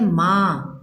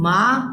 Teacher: जब आप चंद्र बिंदु लगाते हो तो उसकी ध्वनि जो है वो नासिका से आती है जब तक नहीं लगाते हो तो व निस्वा होता है नासिक · जब हम बोलते हैं मां तो यहां आपको अनुनासिक का प्रयोग सुनाई देगा